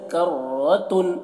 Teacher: رو کو موٹا کر کے پڑھتے ہیں اور تنوین میں اظہار کرنا ہے